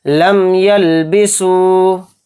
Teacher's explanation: تو دیکھیں یہاں پر میم ساکن آ رہا ہے، میم ساکن کے بعد یا آ رہا ہے تو اس میں میم کو ظاہر کر کے پڑھیں گے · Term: اظہار شفوی